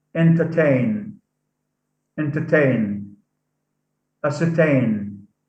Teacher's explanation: So here, the suffix ain carries the primary stress. It's said louder. It's said louder than the base.